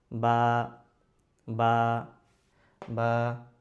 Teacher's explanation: উপরের ঠোঁট নিচের ঠোঁট মিশাবো, ছাড়বো, বা হয়ে যাবে।